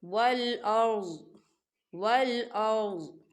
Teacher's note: ملک السماوات والارض، والارض دیکھیں چھوٹی سی توئیں ہیں، یہ وقف کی علامت ہے، وقف مطلق کی علامت ہے، تو یہاں ٹھہرنا بہتر ہے۔ وقف کی صورت میں ضاد جو ہے وہ ساکن ہو جائے گا